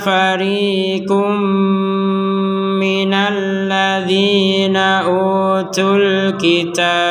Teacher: Maka kita masukkan tanwinnya kepada huruf mim disertai dengan dengungan sebagaimana ketentuan yang tadi.